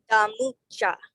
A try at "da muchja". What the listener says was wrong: Almost. So it's a glottalized M. So you have like a glottal stop like right before the M. So da muchja.